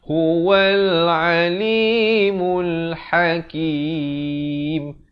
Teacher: Ha di pertengahan kerongkong